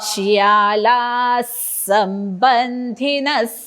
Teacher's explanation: दातावर दात मागणं जीभ रेटायची आणि श्वास सोडल्याचा आवाज तो अर्धा स तो ऐकायला आला पाहिजे